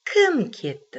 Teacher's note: Мы интересуемся тем, кто ушел. Значит, мы ставим интонацию, мы ударение ставим на слово кім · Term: логическое ударение